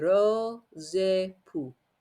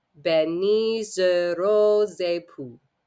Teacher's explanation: So X, normally we wouldn't pronounce it, becomes a Z and gets stuck onto the époux.